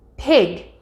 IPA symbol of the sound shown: p